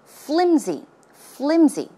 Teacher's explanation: It's not pronounced with an S sound, but it's closer to a Z sound.